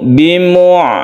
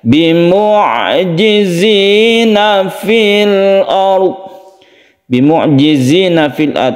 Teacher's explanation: sukun ain itu kita membacanya tidak terlalu ditekan, atau syiddah, bukan syiddah, atau bukan rokhawa. Rokhawa itu dilepas. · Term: tawasud